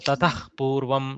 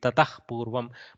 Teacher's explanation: Whenever there is a visarga followed by a pakara or a kakara, okay, this visarga takes a half visarga sound.